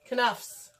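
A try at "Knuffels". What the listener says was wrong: No, the K is silent.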